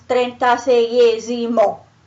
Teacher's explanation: sei has this E that is a diphthong, and it has a stress, so it's also strong, and it can't go away. So you keep it, also in this case, and you add esimo, simply.